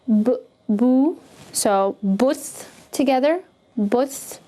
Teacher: the ba here has a Damma on top of it, so again, keep your mouth rounded.